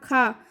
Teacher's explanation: यह महाप्राण है, यानी कि हमें काफ़ी ज़्यादा एयर की आवश्यकता पड़ी इन कंपैरिजन टू अल्प प्राण